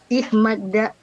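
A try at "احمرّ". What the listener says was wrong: Bukan tapi ir. Oh merah, ihmarra ya baik. Ihmarra bukan ihmadda, ihmarra, ro.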